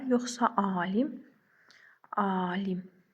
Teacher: A saytı digər saytlara nisbətən uzun tələffüz olundu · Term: səs uzanması